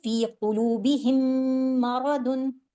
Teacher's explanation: गुना करके दो सेकंड आवाज को ठहराना भी है और गुना भी करना है तो जब भी इदगाम शफी होगा इदगाम होगा मिलाना होगा तो हमें दो सेकंड के लिए अपनी आवाज को ठहराना है। · تو جب بھی ادغام شفی ہوگا، ادغام ہوگا، ملانا ہوگا، تو ہمیں 2 سیکنڈ کے لیے اپنی آواز کو ٹھہرانا ہے، غنہ کرتے ہوئے ہم ایک میم کو دوسرے میم میں داخل کریں گے · غنہ کر کے 2 سیکنڈ آواز کو ٹھہرانا بھی ہے اور غنہ بھی کرنا ہے